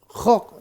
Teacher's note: Ko di tenggorokan atas jangan salah ya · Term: huruf ko